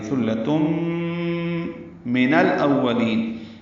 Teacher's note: تنوین ہے تا پر، تائے مربوطہ، اور اس کے بعد میم آنے کی وجہ سے ادغام ہوگا، تا کو میم سے ملا دیں گے